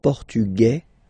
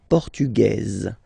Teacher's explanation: it will be only in this z sound the difference between the masculine form and The Feminine form okay masculine portug you don't pronounce the S feminine form portuges